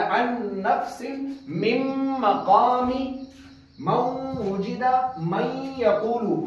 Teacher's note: نون میم واو یا میں ہمیں غنہ کرنا تھا اس لیے ہم نے ان نفس, عین کو نون کے ساتھ ملایا, ان نفس مم مقامی من وجد من یقول. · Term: ادغام غننے کے ساتھ